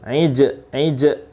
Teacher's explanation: Nah, jim sukun mantul.